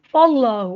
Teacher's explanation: मिनल मुमिनीन, हमज़ा पे अब जज़म है तो यहाँ हम झटका देंगे, नी को लंबा करेंगे, जज़म वाली या से पहले ज़ेर है, हरूफ मद्दा है, एक अलिफ के बराबर लंबा होगा। फल्लाहु, अल्लाह कलाम को मोटा पड़ा, अल्लाह कलाम से पहले ज़बर है, अल्लाह कलाम पे खड़ी ज़बर है, एक अलिफ के बराबर लंबा होगा।